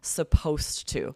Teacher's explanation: When you have these words supposed with the ed and to, supposed to, there's elision in spoken English where that ed is replaced by the t sound in to